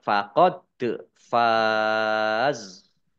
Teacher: Dibaca panjang, boleh 6, 4, atau 2 harokat. Dan ini zak sukun jangan dipantulkan ya